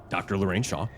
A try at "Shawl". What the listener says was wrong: I think you said Shaw. It's Shawl.